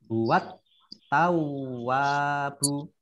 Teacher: Alif lam syamsiah ya tidak dibaca, langsung masuk ke tak.